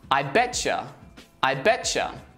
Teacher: Often words that end in a t and the next word starts with y, they merge together and the sound becomes a ch sound.